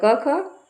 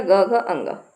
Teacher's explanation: अघोष में हो गया क ख और सघोष में हो गया ग घ अंग